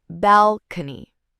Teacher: This word has 3 parts, and the stress is on the first part.